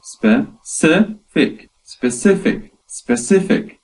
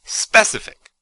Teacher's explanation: That is 3 syllables with the stress on the second syllable.